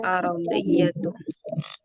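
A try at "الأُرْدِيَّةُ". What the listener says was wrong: Ya, bukan ar. Urdiyatu.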